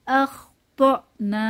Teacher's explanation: ত এখানে একটু ধাক্কা হবে, হামজায়ে সিফাতে শাদিদা, ধাক্কা দিয়ে পড়ব। আখতানা, নাতে এক আলিফ টান হবে, জবরের বাম পাশে খালি আলিফ, মাদের হরফ এক আলিফ টেনে পড়ব।